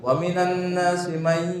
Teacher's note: Nunnya tidak dibaca langsung dimasukkan ke ya. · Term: Idgham bi guna